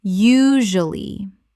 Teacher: Three syllables in natural speech. The middle syllable is compressed.